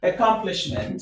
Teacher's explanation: The stress is on the third syllable from the end of the word.